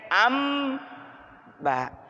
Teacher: Apa iqlab? Menukar dari bunyi n, ya, anba menjadi m